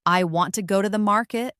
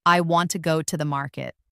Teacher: the stressed words are want, go, and market. The smaller words like I, to, and the are less stressed. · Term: sentence stress